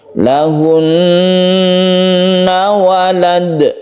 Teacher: Lahunna walad, walad ini kita sebut dengan qalqalah. Karena ada di akhir ayat atau ketika waqaf, maka disebut dengan qalqalah kubra. Kita pantulkan huruf dal tersebut.